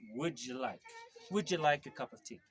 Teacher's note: Okay, when you have the words like would and you together, the d and the y sound go together and they sound like j